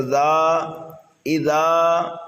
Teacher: زال کو ہم نرمی کے ساتھ پڑھیں گے اور ایک الف کے برابر کھینچ کر کے پڑھیں گے